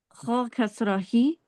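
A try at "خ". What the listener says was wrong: Kha should be bold. Kha kasrahi.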